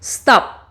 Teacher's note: El sonido final no activa nuestras cuerdas. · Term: sonido sordo